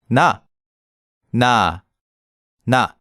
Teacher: similar to the English [n] but you have to put your tongue between your upper teeth and lower teeth when you pronounce it